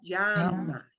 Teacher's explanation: You hear a tiny J when I say that, llama. But it is okay to pronounce that llama, just like a Y, llama is okay.